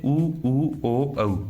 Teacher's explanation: जिन स्वरों का उच्चारण करते समय ओष्ठ वर्त की भांति गोल हो जाते हैं, वर्तमुखी या वृत्ताकार स्वर कहलाते हैं।